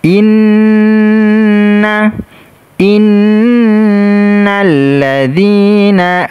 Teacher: nun bertasydid, kita baca dengung dan ditekan.